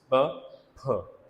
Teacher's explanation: दोनों जो है बाइलेबियल हैं, दोनों लिप्स हम इस्तेमाल कर रहे हैं ना, ठीक है, बाइलेबियल हो जाएंगे। दोनों जो हैं वो वॉइसलेस हैं, प, फ, ठीक है, दोनों वॉइसलेस हैं